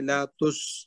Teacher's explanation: جو سین ساکن ہے اس میں ہمس کریں گے، لاتس. ہمس ہوگا.